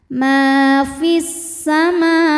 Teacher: Ma hukumnya adalah mad tabi'i muqaddar, sebab mim berharokat fathah berdiri. Cara membacanya adalah mim dipanjangkan 2 harokat.